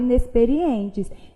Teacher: É como se esse N tivesse aqui só para nasalizar o som do E. Ora, então eu tenho aquele dígrafo vocálico, em que duas letras representam um fonema, que no caso é o som dessa vogal nasalizada.